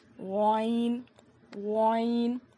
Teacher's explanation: حلق کے اوپر والے حصے سے غائن ادا ہوتا ہے